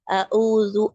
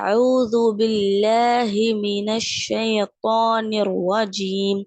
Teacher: அவுது எப்படி சொல்லணும் அப்படின்னா அவுது அங்க ஹம்ஸாக்கு அப்புறமா இருக்கக்கூடியது ஐன் அப்போ ஐன் நம்ம பார்த்திருக்கோம் மிடில் ஆஃப் தி த்ரோட் நடுத்தொண்டையிலிருந்து வரணும்னு பார்த்திருக்கோம்